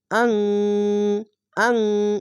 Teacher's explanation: ইকফা গুন্নাটি নুন কে বাংলা অনেস্কারের মত উচ্চারণ করতে হবে